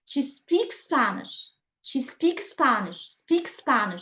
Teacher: because we have here the same sound twice, we'll pronounce it once